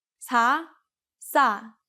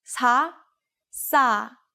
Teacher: it sounds like the S sound in sa is being held a little bit longer.